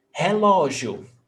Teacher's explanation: Stressed syllable before last. Paroxítona.